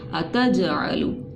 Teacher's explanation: کیونکہ مد کے بعد کیا ہے، حمزہ الف کی شکل میں آ رہی ہے، تو یہاں پر اس مد کو ہم نے کیا کیا، اس کو ہم نے 3 الف کے برابر کھینچ لیا۔ اس کے بعد یہ جیم جو تھی ساکن ہو رہی ہے، یہ حرف قلقلہ میں سے، تو یہاں پر اس کی آواز واپس پلٹ کے آئی، اتجعلو، ٹھیک ہے، اس طرح سے باقی کو ہم نے نرمی سے پڑھ لیا۔